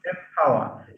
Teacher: The p of power is bilabial, so it's easier to have the same place of articulation. So by changing the n sound to m, we get two bilabials instead of an alveolar followed by a bilabial. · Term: assimilation